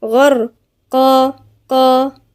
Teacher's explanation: الغاين هنا مفخمة من الحروف المفخمة، غر، والراء مفخمة لأن الراء ساكنة وقبلها مفتوح، يبقى ايه من الحروف المفخمة الراء دي. بعديها القاف مع الألف مفخمة